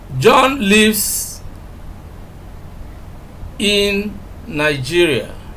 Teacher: you can see that we are laying emphasis on where John lives, in Nigeria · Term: emphatic stress